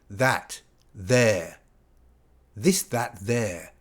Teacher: Okay, so we make this in the same way as we make the strong th, but whereas in th we blow air down here and we don't use our vocal cords. In the soft th, we do use our vocal cords. So if you touch your throat, you should feel something like this.